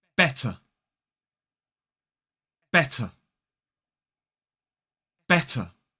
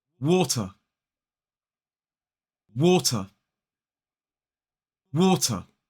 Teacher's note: using that sharp, clear t sound in the middle of these words makes your speech sound much more like a modern British RP accent.